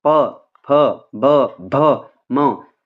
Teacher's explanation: जैसे आप प बोलते हो तो आपके होठ जो है वो मिलते हैं। प फ ब भ म ऐसे बोलना है आपने। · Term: ओष्ठय